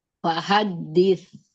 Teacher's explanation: Sa ya, keluarkan ujung lidahnya ya, makhrajnya.